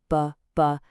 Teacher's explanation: The common mistake is to pronounce it like a voiced English B. That BBB sound where your vocal cords vibrate. The correction, as you see there, is that it's an unaspired sound.